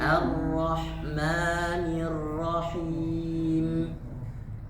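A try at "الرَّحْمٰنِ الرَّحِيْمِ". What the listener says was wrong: Ar-Rahmanir-Rahim. Ar-Rahmanir-Rahim.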